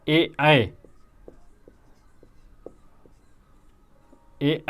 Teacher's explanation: फिर सात है सात, एतय दो, एतय दो, कंठ ताल, एतय दो कंठ ताल अर्थात ए जो है कंठ और तालु से बोले जाते हैं